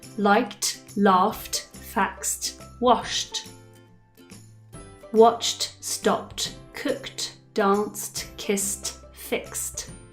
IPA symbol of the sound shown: t